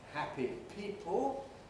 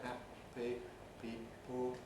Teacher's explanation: those should be voiceless stops in the middle of each word